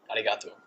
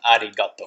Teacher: the R sound is like almost like a roll, like your tongue is rolling, almost like in Spanish. · we don't have that D sound for an R sound in English